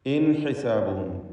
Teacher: സക്കിനത്ത് നൂനും ഹാവും ഇൽഹാർ ഹൽഖി നൽകി മണിക്കാതെ വെളിവാക്കേണ്ടതാണ്